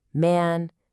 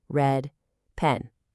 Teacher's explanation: That really wide open black cat sound in man, and then the more closed, relaxed red dress sound in red and pen.